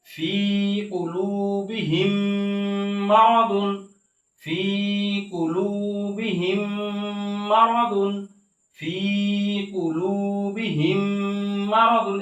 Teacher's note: এই মিম সাকিনের পরে মিম আসার কারণে এই মিমকে এই মিমের মধ্যে ঈদগাম করে বা মিলাইয়া পড়া হয়েছে গুণনার সহিত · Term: মিম সাকিনের ঈদগাম